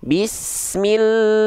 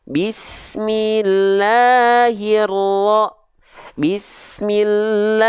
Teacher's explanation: pastikan la-nya tepat di dua harakat ya jangan sampai Kepanjangan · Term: Mad Thobi'i